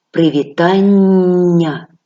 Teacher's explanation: ви відчули що я трошки протягнула його вимовляючи тобто подовжила у вимові такі звуки в українській мові називаються подовженими звуками але на письмі